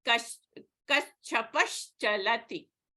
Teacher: the Visarga is preceded by a vowel A, followed by a hard consonant Cha. So the Visarga changes into a Shakara or a Sha · Again, the Visarga is preceded by A, followed by Cha. So this Visarga will be changed into Sha.